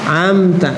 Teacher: Kenapa idhar syafawi? Karena idhar terjadi di 2 bibir.